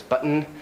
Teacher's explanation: and a lot of other types of english button becomes button it's kind of either released through the nose or kind of swallowed or becomes kind of like an n